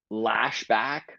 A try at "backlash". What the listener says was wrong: I've never heard of Backlash pronounced lashback. That was great.